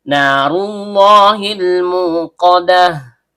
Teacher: Nun ujung lidah bertemu dengan langit-langit bagian tengah. Karena nunnya berharakat fathah diikuti alif layyinah, maka terjadi hukum bacaan mad thobi'i. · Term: tebal atau tabkhim